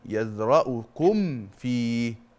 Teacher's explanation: الميم لما يكون بعدها فاء بنسميها ايه؟ اظهار. اظهار شفوي.